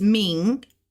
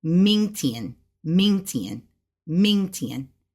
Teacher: Ming going up in second tone, especially when used with day, which is tomorrow, Ming Tian, Ming Tian, Ming Tian.